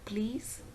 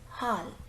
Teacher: the tip of the tongue just raises towards the teeth ridge and it touches the alveolum and the air just releases on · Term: voiced alveolar